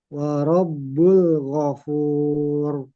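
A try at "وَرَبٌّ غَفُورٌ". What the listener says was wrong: Karena dengannya lam. Warabul. Warabun ghafur.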